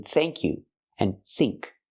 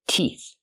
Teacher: the th makes a sound with no voice, like in thank you and think